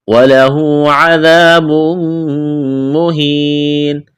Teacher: وَلَهُ عَذَابٌ مُّهِينٌ، وَلَهُ الٹا پیش ہے، الف کے برابر کھینچنا ہے، عذاب، الف مدہ ہے، الف کے برابر کھینچنا ہے، تنوین کے بعد میم ہے، ادغام کریں گے، میم مشدد ہے، آواز ناک میں چھپائیں گے، غنہ کریں گے، یا ساکن سے پہلے زیر ہے، یا مدہ ہے، الف کے برابر کھینچنا ہے، وقف کریں گے، آخر والے حرف نون کو ساکن کریں گے۔